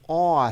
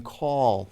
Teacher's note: But then the last sound is this aww sound, which is actually made in the back of the mouth, with the tongue dropping down and pulling in the back of the mouth